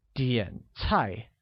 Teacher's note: Similarly, order becomes 点菜, which uses a falling rising tone on the first A and a falling tone on the second